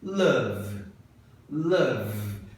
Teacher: o último som que você faz é o V. Tá vibrando a sua corda vocal. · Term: voiced